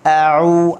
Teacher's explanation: Okey, bersifat dengan jahar. A'u, ain bagi depan, u kena muncung.